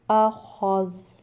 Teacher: زال کی آواز آئے گی مگر اس کے اوپر جو زبر ہے اس کی آواز وقف میں نہیں آئے گی